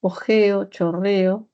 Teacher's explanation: La O y la E, según el desplazamiento vertical, son medias, ¿cierto? Ojeo, chorreo, y está, media, ¿cierto?